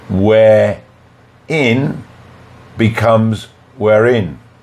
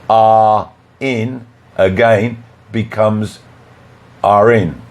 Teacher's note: the final R is pronounced so we can link it to the next word listen we're in becomes we're in number two are in again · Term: linking